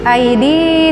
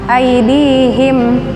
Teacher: aidi di 2 harokat, mad tabi'iyah